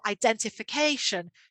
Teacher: you can also hear the stress on the second syllable so helping the students to recognize word families patterns shifting stress